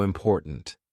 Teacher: My tongue is there. It's ready to do the T, but it doesn't release. We just go important.